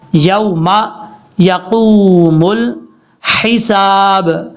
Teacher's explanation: لام کے بعد جو ہا ہے یہ ہا بریک ہے، اس کو بھاری ساؤنڈ کے ساتھ نہیں پڑھنا، کلیئر کر کے پڑھنا ہے